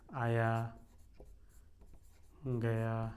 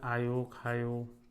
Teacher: आकारांत इसमें ज़्यादा है, और ब्रज भाषा है तो उकारांत, मतलब इसमें क्या रहता है, आया गया, ये आयो खायो, ठीक है।